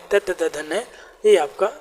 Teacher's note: ता-वर्ग (ता, था, द, धा, ना) दांतों से बोला जाता है।